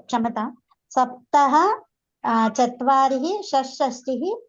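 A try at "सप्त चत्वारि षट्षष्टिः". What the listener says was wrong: విసర్గ రాదు మాత. చత్వారిహి అంటున్నారు, కాదు. దశ పర్యంతం విసర్గ నాస్తి.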